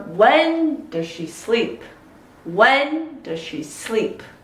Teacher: When and sleep are the most important content words.